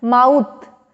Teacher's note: यहाँ भी देखिए ओ यू है ना, तो वर्ड क्या है, MOUTH, दो वॉवल है, ठीक है, लेकिन साउंड क्या प्रोड्यूस कर रहे हैं, पूरा पूरा ना ओ साउंड हो रहा है ना यू साउंड रहा है, माउथ, तो आउ, ना आ पूरा है ना ओ पूरा है ना यू पूरा है, दिस इज माउ, आउ, ठीक है।